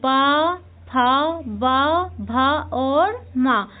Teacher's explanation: कि जब हम इन व्यंजनों का उच्चारण करते हैं तो हमारे दोनों दोनों ओष्ठ ऊपर का ओष्ठ और नीचे का ओष्ठ दोनों आपस में मिलते हैं। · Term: ओष्ठ व्यंजन